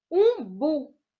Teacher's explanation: Umbu é uma fruta que o bu é a sílaba mais tônica, é uma oxítona e não tem acento.